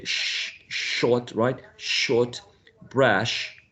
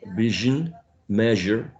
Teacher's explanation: the first one voiceless the second one voiced